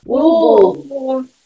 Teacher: A tônica é o bu. É a última sílaba.